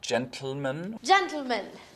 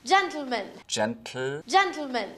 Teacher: lateral plosion on words like gentlemen gentlemen that's exploding the t sound straight into the l sound